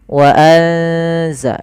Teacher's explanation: Suara nunnya disamarkan ke zai. Wa anza sambil ditahan bacaan eng-nya atau bacaan gunnah ikhfa ya, dengungannya. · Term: bacaan ikhfa